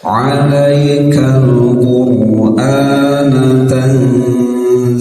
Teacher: Alaikal Qur'ana tanzila ikhfatan Suara disamarkan dan ditahan sekitar 2 harokat. Ketika ditahan dan disamarkan itu siap-siap lidah di posisi huruf zai, yaitu ujung lidah menyentuh gigi seri bawah ya. Tanzila, zi sama la dibaca 2 harokat, matobi'i mad iwan sama-sama dibaca 2 harokat, cukup sekitar 1 ayun saja ya.